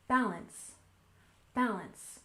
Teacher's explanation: in Balance we stress the first syllable